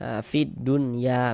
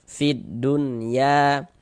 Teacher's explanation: dia nggak dibaca huruf lamnya dari fi ini langsung masuk ke huruf syamsiyah, yakni huruf dal ini. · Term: alif lam syamsiyah